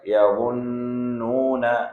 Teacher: یہ اب ہم نے یظنون میں جو پہلا نون ہے اس کو ہم نے ناک میں آواز لے کے گئے ہیں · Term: غنہ